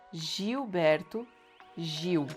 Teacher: The L before B will sound like W. The G in the beginning of these words that they have a vowel right after sounds like J.